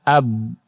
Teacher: Karena tertahan dia mantul, jadi qalqalah.